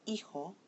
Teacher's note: So these words end in N, S, and a vowel, and the natural accent is on the second to the last syllable